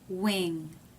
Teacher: The NG is made at the back of the mouth. The back part of the tongue reaches up and touches here. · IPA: ŋ